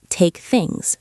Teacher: He didn't say take things with a break. He said take things smoothly. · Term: connected the words